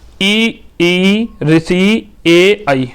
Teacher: आगे वाली जीभ काम करेगी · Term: अग्र